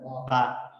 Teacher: با ہونٹ ملاتا ہوں تو با پڑھا جاتا ہے، ادروائز با نہیں.